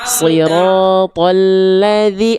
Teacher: L-nya ditekan karena lamnya bertasydid. Siratal, jangan kecepatan L-nya, ditekan dulu.